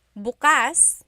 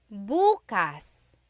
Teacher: Homonym means it has more than one meaning depending on the context or depending on the pronunciation. If you say bukas, the emphasis is on the second syllable. That means open. If you say bukas, emphasis is on the first syllable. That means tomorrow.